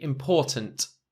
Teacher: it's got that sure sound just after the T important and you can see again that I don't uh emphasize the last T